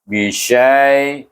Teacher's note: syaiya sebelumnya baris di atas kena baca dengan lin.